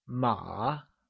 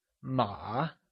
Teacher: horse translates to ma and is said with a falling, rising tone, also known as the third tone